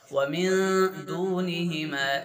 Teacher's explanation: इख़्फ़ा करना यहाँ पर, आवाज़ को नाक छुपा के पढ़ना, नून की आवाज़ को।